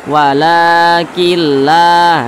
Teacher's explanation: jangan ditahan suaranya Jangan dipanjangkan karena dia tidak didingungkan